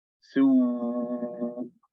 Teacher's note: vibrating the vocal cords, plus circling the lips, plus raising the farthest part of your tongue. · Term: dhamma